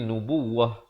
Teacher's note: Tapi kalau berhenti di sini mesti nubuwah, tak boleh nubuwat sebab ta marbutah, ta simpul, bila waqaf dibunyikan ha